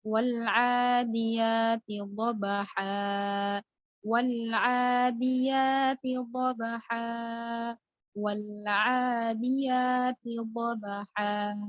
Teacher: maka dipanjangkan saja sepanjang 2 harokat tanpa menyebut tanwinnya. Karena mat iwad bacaannya dipanjangkan saja tanpa menyebut tanwin.